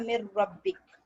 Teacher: मगर देखिए इदगाम कंप्लीट है, मिर रब्बिक, नून ड्रॉप हो गया और डायरेक्ट रॉ पे आ गया, नून मिल गया रॉ में, मिर रब्बिक, मगर गुन्ना नहीं है, गुन्ना भी नहीं है और एक अलिफ के बराबर भी इसको टाइम नहीं दे रहे